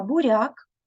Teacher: в слові буряк буква р позначає звук р м'який буква я позначає один звук а